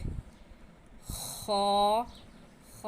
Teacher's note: खा खा का मखरज है हलक का शुरू जो मुंह की तरफ है उससे खा निकलता है।